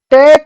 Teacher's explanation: ट का उच्चारण दंत से होता है, दंत से तो ट वर्ग का उच्चारण नहीं होता। ट वर्ग का उच्चारण तो हमारा मूर्धन्य या मूर्धा से होता है